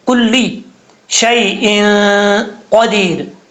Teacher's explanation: دو زیر کی تنوین کے بعد قاف اور حروف مصالحہ میں سے اور حروف اخفا میں سے ہے، اس لیے یہاں پر غنہ کریں گے، ایک الف کی مقدار نون تنوین کا اخفا ہوگا